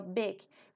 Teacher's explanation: Big no decimos Big sino Big como entre I y e es como una I que la boca no no sonríe